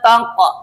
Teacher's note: taq mantul qol mantul namanya qalqalah